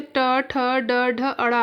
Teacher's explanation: हमारे मूर्धा में क्या आएंगे, तो ट ठ ड ढ अड़ा आएंगे